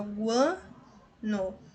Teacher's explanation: Então, aqui nós temos o crescente nasal, também, ó, guano. O som é fechadinho, é anasalado, é nasal